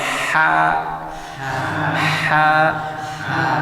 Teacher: dari pangkal tenggorokan sumber suara itu dia mengalir ke rongga mulut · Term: huruf Ha